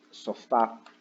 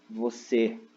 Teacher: Então, as oxítonas, elas são as palavras cuja sílaba de maior tonicidade está na última sílaba